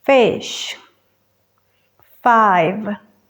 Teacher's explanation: para la F solo dejamos salir el aire ya que es sorda